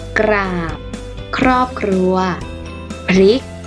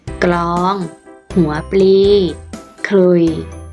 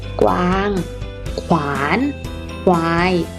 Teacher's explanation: เวลาอ่านออกเสียงจะอ่านออกเสียงพยัญชนะต้นทั้ง2ตัวพร้อมกันค่ะ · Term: คำควบกล้ำแท้